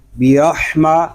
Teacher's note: ہا حلق کے درمیان والے حصے سے ادا ہوگا